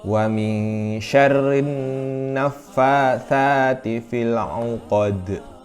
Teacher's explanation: alif lam tersebut tidak terbaca maka hukum bacaan tersebut adalah idgham Syamsiyah